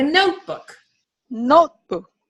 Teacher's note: a nice almost like a pure tone right it's like oh we make an O more open